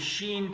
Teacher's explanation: حروف شجریہ میں سے ہے شین، حروف شجریہ تجوید کے زبان میں کہتے ہیں، یہ درمیان میں ادا ہوتا ہے، زبان کے درمیان میں